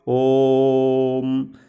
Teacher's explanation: जैसे कभी कभी किसी मंत्र का उच्चारण बोलते समय, जैसे ओम, इसमें जिस बीच में ओ और म के बीच में जितनी लंबी आवाज़ होती है, इसीलिए इसको प्लुत स्वर कहा गया है